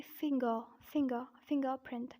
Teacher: I'm pronouncing the second R but not pronouncing the first R the reason is that this R is followed by P not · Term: British accent